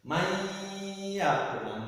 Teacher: harus dengung, artinya agak lama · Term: bilgunnah